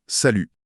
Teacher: Mais l'instruction formelle de cette première leçon est super catégorique. Il ne faut surtout pas prononcer le T final.